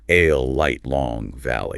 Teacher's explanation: Air flows around the sides of the tongue.